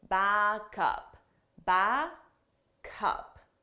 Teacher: we take the sound from back, the last sound, and we transfer it to the next sound, up, back up. But you have to combine those sounds together so it sounds like one word. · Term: linking